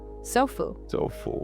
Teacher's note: No, we put the power on the so. The end becomes the lazy schwa.